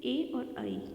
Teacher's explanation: ये कंठ और तालु दोनों से मिलकर बोले जाते हैं, इसे कंठ तालव्य ध्वनि कहते हैं।